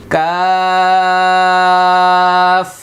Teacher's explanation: কাছাকাছি কিন্তু এটার চেয়ে একটু সামনে বাড়াইয়া পাঁচ নাম্বারটা হলো কাফ জিহ্বার গোড়া হতে একটু আগে বাড়িয়ে তার বরাবর উপরে তালুর সঙ্গে লাগিয়ে একটি হরফ উচ্চারিত হয়